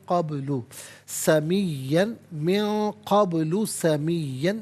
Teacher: با ساکن ہے لیکن یہاں پر حرف قلقلہ ہے تو آواز لوٹتی بھی محسوس ہو. قبل سمین، من قبل سمین، یہاں وقف پڑھیں گے تو سمیہ پڑھیں گے.